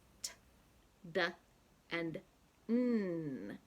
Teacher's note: It's right behind your front teeth, right here. And in English, we use the tongue against the alveolar ridge to produce the sounds t, d, and n